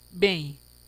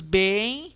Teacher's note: mas o m aqui nesse nessa palavra ele nasala o e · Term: nasalização